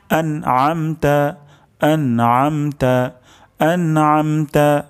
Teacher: আইন উচ্চারণ হবে গলার মাঝখান থেকে